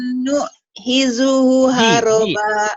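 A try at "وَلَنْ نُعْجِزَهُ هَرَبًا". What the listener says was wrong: Bukan nuhi, ini ji. Oh, nujijahu. Jizahu. Walan nu'jizahu haroba.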